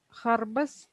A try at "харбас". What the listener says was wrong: Харбас. Харбас. Надо протянуть.